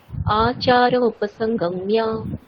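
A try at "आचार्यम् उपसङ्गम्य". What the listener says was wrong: আচ্ছা, আচার্যম, ওখানে মকারটা স্পষ্ট হয়নি আপনার। আচার্যম উপসংগম্য।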